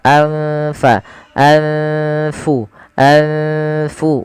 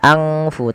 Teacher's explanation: Cara membacanya adalah nunnya disamarkan kepada fa. Anfa, anfu, anfu, bukan angfu tapi anfusukum mustakbartum. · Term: ikhfa